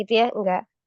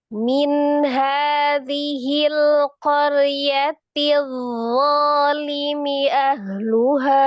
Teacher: Kalau huruf dho itu sifatnya rokoh, jadi harus dialirkan.